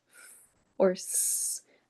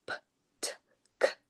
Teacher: Um, so fricative sounds, they last a long time. It is this continuous airflow that's going on to produce f or s as opposed to p-t which are very short sounds.